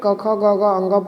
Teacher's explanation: कवर्ग का उच्चारण जो होता है कंठ के द्वारा होता है।